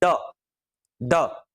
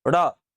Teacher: जीभ ऊपर गई, रुकी नहीं रही, वापस आई नीचे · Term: उच्छिप्त